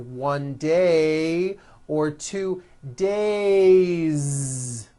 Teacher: it's days with a voiced Z ending